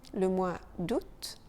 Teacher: on ne prononce pas le A